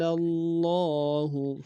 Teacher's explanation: لفظ اللہ کے لام کو زور دیں گے شدہ اور کھڑا زبر ہے ایک اختیار میں کھینچیں گے